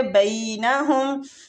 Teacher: بئی یالین ہو رہا ہے، تھوڑا سا کھینچیں گے مد ماں کی طرف